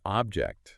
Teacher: First syllable stressed, it's a thing.